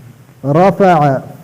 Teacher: دو سامنے والے اوپر دانتوں کی سر نیچے ہونٹ سے لگا کر ادا ہوتا ہے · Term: فا